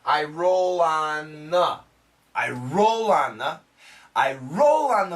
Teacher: this th sound is almost cancelled it almost sounds like I roll on the I roll on